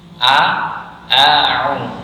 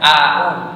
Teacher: awalnya dengan hamzah yang letaknya di pangkal tenggorokan. Ini di pangkal tenggorokan, nanti berpindah ke ain yang dia di tengah tenggorokan. A'u. Ini jangan au, nah beda.